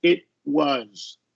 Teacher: we're going to stop the T and just go directly into the consonant